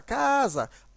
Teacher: como a palavra casa casa, a sílaba tônica é a penúltima, então ela é uma paroxítona